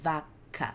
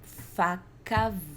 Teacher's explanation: A única diferença das duas palavras é que o F não vibra e o V vibra. A única diferença das duas palavras é que o V é voiced e o F é unvoiced.